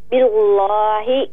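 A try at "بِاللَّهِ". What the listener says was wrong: نہیں، لام کو باریک کریں. باللہ.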